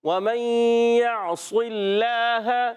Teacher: اللہ پاک کے لام سے پہلے زیر ہے، اس لیے اللہ پاک کا لام باریک پڑھیں گے